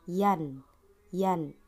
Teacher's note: bertemu dengan huruf hamzah pada kata wayanuna nah bisa kita lihat terdapat nun sukun lalu setelahnya ada huruf hamzah yang berharakat fathah maka nunnya ya harus kita baca dengan jelas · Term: izhar